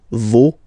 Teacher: Okay, so remember, even if you've got this final s, you don't pronounce it, as it was the case already for this word, no, you don't pronounce the final s